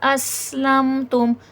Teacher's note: اس میں صفیر ہے، سیٹھی کی آواز آئے گی